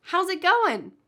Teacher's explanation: I'm dropping the G at the end